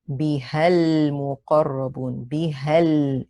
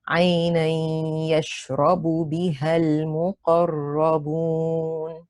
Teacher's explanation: So go straight from the ha to the lam.